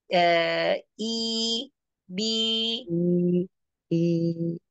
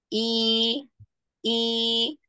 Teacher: dia menurunkan rahang bawah dan mengangkat Tengah lidahnya